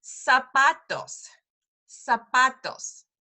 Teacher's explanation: a little different it's going to sound a little off because really whenever you see a z in Spanish it's an S